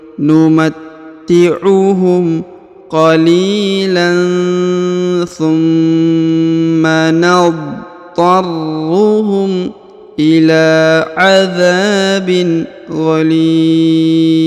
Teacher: Kemudian huruf yang di ujung, huruf zin ya, disukunkan atau dimatikan karena berada di ujung ayat atau di ujung bacaan.